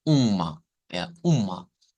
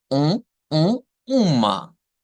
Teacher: es una u nasalizada verdad decíamos que esto es una nasalización